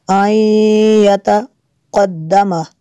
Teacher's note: نون ساکن کے بعد یا ہے حروف یرمالون میں سے، یہاں پہ ادغام ہوگا اس لیے یہاں پہ غنہ کریں گے